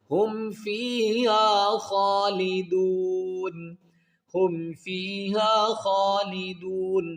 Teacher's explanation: دال وا پیش دو کو ہم کیا کریں گے کہ ایک الف کی مقدار کھینچیں گے، آگے دیکھیں گے نون ساکن ہوگا کیونکہ یہاں پر سٹاپ کریں گے، تو جب نون ساکن کریں گے یہاں پر سٹاپ کریں گے تو پھر اس کو ہم 3 الف کی مقدار کھینچ کر یہاں پر کیا کریں گے، وقف کریں گے۔ · تو یہاں پر اظہار ہوگا، ادغام اقلاب اخفا نہیں ہوگا، بلکہ اظہار کیا جائے گا، غنہ نہیں کیا جائے گا۔